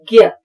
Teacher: ज्ञ जो हम प्रायः उच्चारण हिंदी में आजकल य का करते हैं उसमें ग और य ये दो व्यंजन जो है वो सुनाई देते हैं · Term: मिश्र व्यंजन